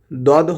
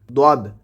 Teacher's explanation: দদ হরফটিকে উচ্চারণ করতে হবে জিহ্বার গোড়ার কিনারা উপরের মাড়ির দাঁতের গোড়ার সঙ্গে লাগায়ে